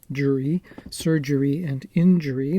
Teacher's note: the second and third syllables of each of these two words while literally different are phonetically indistinguishable